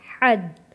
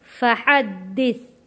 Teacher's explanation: حا جڑے گا تشدید والے دال کے ساتھ